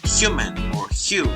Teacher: the voiceless non-grooved palatal slit affricate